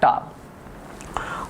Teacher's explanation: ऊपरी तालु के अगले भाग में हम लोग जाते हैं तो यहाँ पे आता टा, और इसको कहा जाता मूर्धन्य, क्या कहते हैं इसको, मूर्धन्य वर्ण के रूप में हम लोग जानते हैं।